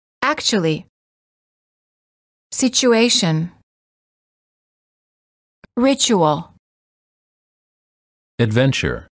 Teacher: t plus u is usually pronounced as Chu as in church